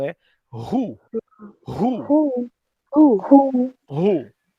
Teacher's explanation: Esse WH vai ter um som diferente, vai ter um som de R